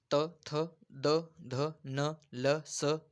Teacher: दंत्यवर्ण. त, थ हे ज्यावेळेस उच्चार करतो आपण आपल्या दाताच्या जे वरच्या दाताच्या मागल्या बाजूला हे स्पर्श केलं जातं म्हणून आपण याला म्हणतो दंत्यवर्ण.